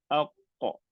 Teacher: qalqalah yang melantun. The one that bounce macam sukun pada qaf.